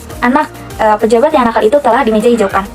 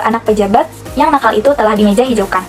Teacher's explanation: perbedaan jeda Ini yang agak lama antara anak dan pejabat kalimat satu dan antara pejabat dan yang kalimat dua makna kalimat itu berbeda pada kalimat satu yang nakal adalah pejabat